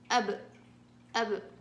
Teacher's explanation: الحروف كلها ثابتة في الحرف الساكن ما عدا المقلقل، في نفس المخرج بأقلقله بحركه أب أب، لكن الحروف الثانية كلها لازم أثبت الحرف.